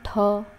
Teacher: मुंह से अधिक हवा निकल रही है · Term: महाप्राण